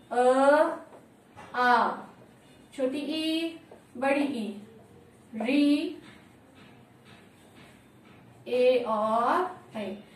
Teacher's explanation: इनका उच्चारण करते समय हमारे जो होठ हैं उनकी आकृति वृत्ताकार नहीं हो रही है। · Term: अवृत्ताकार